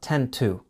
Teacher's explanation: When you don't follow 10 with the hour, you don't get the duh sound. So, we keep the sharp t sound